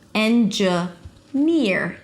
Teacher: So it's a high E and then you relax it to an R. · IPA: ˌendʒəˈnɪɹ